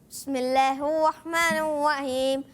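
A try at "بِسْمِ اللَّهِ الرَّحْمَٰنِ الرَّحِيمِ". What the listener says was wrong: اچھا آپ نے کیا کرنا ہے کوشش کرنے کہ بسم اللہ کو بھی اچھے طریقے سے پڑھنا ہے۔ بسم اللہ الرحمن الرحیم، را کی ادائیگی، ہا کی ادائیگی کلیئر کریں گے، اور پھر وَمِزَاجُهُ سمجھایا بھی تھا کہ بعض بچے زا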